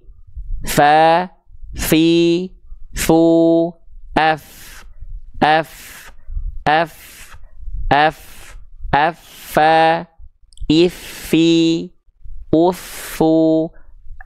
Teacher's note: Ujung gigi sari atas kita sentuhkan dengan perut bibir bawah. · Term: huruf fa